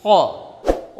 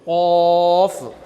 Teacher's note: और इसी तरीके से क़ाफ में, जैसे गुजराती और इंग्लिश में क आता है, वो क नहीं, क़। और ये क़ सीधा सीधा ऊपर से निकला गले में